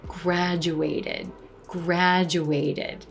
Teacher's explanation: the e d ending is going to be an extra syllable pronounced as id id anytime you have a word that ends in a t